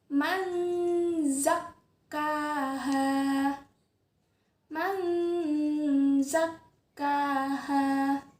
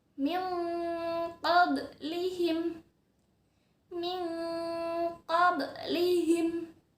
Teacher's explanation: menyamarkan bunyi nun sukun atau tanwin ke dalam bunyi huruf yang ada di depannya dan disertai dengan dengung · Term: samar-samar